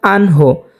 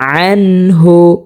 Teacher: আইন হলকের মধ্যখান থেকে উচ্চারণ করতে হবে স্পষ্টভাবে, আন। অনেকে এটা পড়ে থাকেন আনহো, যদি আনহো পড়ে তাহলে কিন্তু সহি শুদ্ধ হবে না।